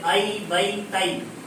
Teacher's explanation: یا متحرک اور یا لین کا مخرج, یا متحرک جس پر زبر زیر پیش ہو, یا لین جس یا ساکن سے پہلے زبر ہو, جیسے ائی بئی تئی. ان کا مخرج کیا ہے؟ زبان کا بیچ اور اوپر کا تالو